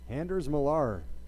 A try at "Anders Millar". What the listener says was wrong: You really mispronounced that one. Doesn't have an F in it at all.